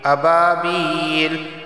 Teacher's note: با الف زبر با ایک الف کے برابر اسے کھینچ کر پڑھا جائے گا، اور با یا زیر بھی اسے بھی ایک الف کے برابر کھینچ کر پڑھا جائے گا۔